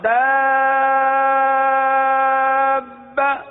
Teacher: مد لازم ہے لہذا مد لازم کو 3 4 یا 5 الف تک کھینچ کر پڑھتے ہیں، یعنی اس کی مقدار کچھ زیادہ ہے۔